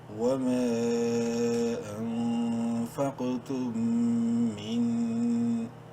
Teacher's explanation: میم ساکن کے بعد میم ہے اور میم مشدد ہے، غنہ بھی ہوگا یہاں پر